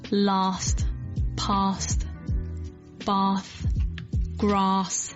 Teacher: open your mouth quite wide like almost like you're going to the dentist flatten your tongue and slide it back a little bit and make this ah sound ah that kind of sound and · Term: long a sound